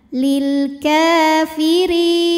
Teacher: Huruf ra dibunyikan secara tarqiq sebab ra berbaris kasrah. Dibacanya tipis, pangkal lidah datar ya. Langsung keluar suaranya ya, ringan.